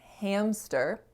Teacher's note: So when we're saying hamster, right between that M and S, our vocal folds go from vibrating to no longer vibrating because the M is voiced and the S sound is not voiced. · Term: coarticulation